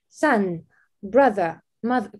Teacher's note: Буква «о», но звук передает «а». Это считается короткий звук.